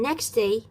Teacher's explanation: The omission of sounds as in next day most often affect t when it is final in a word after se or f and the following word begins with a stop, nasal or friction sound.